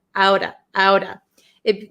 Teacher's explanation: the T becomes a flap T it is between two vowels